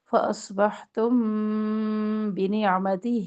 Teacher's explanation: میم ساکن کے بعد با رہی ہے، یہاں پہ اخفا کر رہے ہیں، اخفا شفوی ، تو ایک الف کے برابر یہاں پہ ٹھہر کے آگے